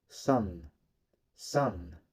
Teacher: the soft palate drops allowing air to pass out through the nose the sound is voiced so the focal chords vibrate while producing